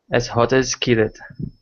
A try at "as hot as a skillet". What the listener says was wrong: you're missing the ah